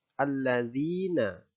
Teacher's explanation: alladzina hukum bacaannya adalah Mad Thobi'i alasannya adalah huruf hijaiyah disitu huruf berharakat kasrah bertemu dengan huruf Ya Sukun maka cara membacanya adalah dibaca panjang 2 harokat